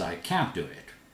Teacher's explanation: T and D merged together. Very difficult to distinguish.